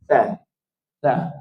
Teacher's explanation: Ada huruf yang pada lidah, tetapi kalau hujungnya berbeza dengan di dalamnya sikit. Hujung lidah bersentuh dengan gigi bahagian depan.